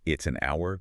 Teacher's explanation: It's an hour because the h is silent. The first sound is ow, a vowel sound.